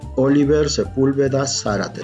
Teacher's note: también la sílaba tónica es la antepenúltima, por lo tanto son palabras esdrújulas · En todas, porque son esdrújulas, entonces todas las esdrújulas llevan acento ortográfico. Oliver, Sepúlveda, Zárate, también la sílaba tónica es la antepenúltima